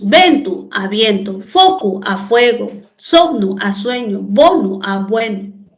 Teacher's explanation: Las vocales latinas E y O, breves y tónicas, pasaron a ser diptongos.